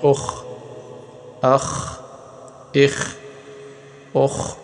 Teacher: خا اگر ساکن ہو تو اس کی آواز کو نہیں ہلائیں گے، اس پہ قلقلہ نہیں کریں گے، کیونکہ یہ حروف قلقلہ میں ہے ہی نہیں۔